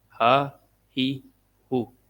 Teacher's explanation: ہا موٹی آواز اس میں آتی ہے گلے سے سینے کی طرف سے. ہا زبر ہا، ہا زیر ہی، ہا پیش ہو، ہا ہی ہو.